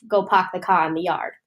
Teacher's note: We could compare this to a Boston accent where the R in some words like park or car tend to get left behind, thus we have go park the car in the yard.